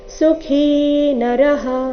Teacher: ಖೀ ಇಲ್ಲಿ ಮಹಾಪ್ರಾಣ ದೀರ್ಘ